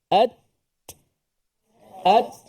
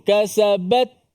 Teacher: Suara putus dulu, barulah dia punya angin tu. Hamas sifat udaranya keluar. At. Kita lepaskan lidah daripada makhraj ta, dia keluar angin.